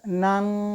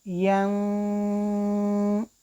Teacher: اس طرح تنوین کی آواز ایک الف کے برابر ناک میں لے کر جانا ہے. ایک الف کے مقدار یعنی 1 or 2 seconds آواز ناک میں رہنے کو ہم غنہ کہتے ہیں.